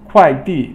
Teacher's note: 快 is fourth tone or falling tone, and 递 is fourth tone.